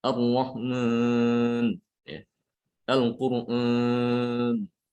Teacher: Jadi yang keenam kesalahan dalam mengucapkan alif maddiyah adalah mencampur suara alif maddiyah ini dengan suara dari hidung dengan gunnah. Ya, jadi ketika mengucapkan ini jadi suara hidung.